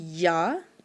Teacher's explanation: جیم، شین اور یا ہمارے تالو کو زبان ٹچ ہوتی ہے، درمیان والا حصہ زبان کا، تو پھر وہاں سے نکلتا ہے یا، ٹھیک ہے.